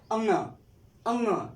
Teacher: इनका उच्चारण नाक के साथ भी हो रहा है। ऐसा लग रहा है कि मुख और नाक दोनों जो है कि हमारे सहायक हो रहे हैं इनका उच्चारण करने में। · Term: नासिक के व्यंजन